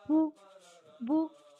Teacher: يطيل صوت الضم قليلا. مثال: باء ضمة بو بو، باء واو ضمة بو. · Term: واو المد